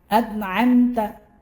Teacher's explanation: Di situ ada hamzah. Yang mula-mula hamzah, kemudian yang berikutnya ain.